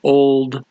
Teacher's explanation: holding the l he's not saying old he's saying old look he's holding l extra long